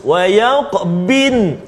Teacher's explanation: Yang kedua bunyi nun terus. Wa yaqbin, dad pula hilang.